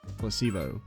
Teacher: The stress is on the middle syllable.